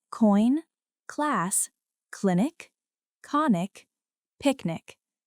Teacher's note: This is a strong voiceless sound made at the back of the mouth. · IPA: /k/